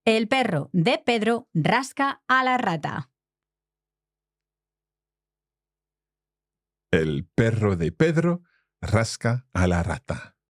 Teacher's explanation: we've got all double R sounds, like strong R sounds in there, even though some are just single R's in terms of the spelling